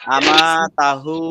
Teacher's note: এই তাতে টানটা হবে না, টান হবে শুধু হুতে।